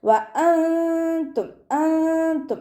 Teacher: നൂനിൻ്റെ sound അവിടെ ഉണ്ട്, പക്ഷെ അവിടെ നൂനെ മറച്ച് വെക്കണം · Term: ഇഖ്ഫാ